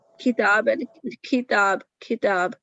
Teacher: ہوا مینس کہ ہم خطاب اگ، تو اس بھا بھا اور جو بھی ایسے ورڈ جس میں ہم شدت نہیں لاتے تو پھر اس میں ہمس آ جاتا ہے، یعنی کہ اس میں ایک ہوا کی لیکیج ہو جاتی ہے، اس کی وجہ سے وہ لیٹرز جو ہیں اس طرح شدت نہیں آتی، وہ پریشر نہیں بنتا پیچھے.